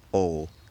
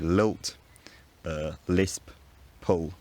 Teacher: But if it's followed by a consonant, or it's at the end of a word, it's pronounced with the tip of the tongue at the alveolar ridge and the body of the tongue pulled back and up to the soft palate